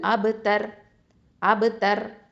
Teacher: அப்போது ஹுவல் அபு தர், அபு தர். இந்த ரா சுக்குனை வந்து ஹெவியாக தான் உச்சரிக்கணும், ஏன்னா ரா சுக்குனுக்கு முன்னாடி எழுத்து இப்போது ஃபத்ஹா இருக்கிறதுனால.